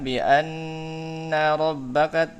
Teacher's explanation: Yang pertama guna lebih dipanjangkan